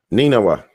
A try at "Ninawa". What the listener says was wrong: You gotta slow it down. pronounce the word. And you can speed it up. You just gotta say it like that. Ninawa. You gotta say it.